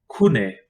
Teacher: it is an unvoiced velar stop pronounced like the k in kid